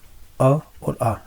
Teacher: D number option हो जाएगा क्योंकि हम जानते हैं कि जो अ और आ इनका उच्चारण स्थान कंठ होता है